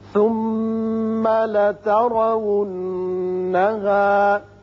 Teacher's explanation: ثم میم مشدد ہے، غنہ ہوگا. لتارا، را کے اوپر زبر ہے، پر پڑھیں گے.